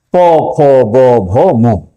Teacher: সেই ধরনের ব্যঞ্জন ধ্বনিগুলো হচ্ছে অষ্ঠধন। এখানে এই নিচের যে অষ্ঠ উপরের অষ্ঠে বাধাদান করছে শ্বাসবায়ু বের হতে পারছে না। তখন হচ্ছে অষ্ঠধনি প ভ ম। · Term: ওষ্ঠধ্বনি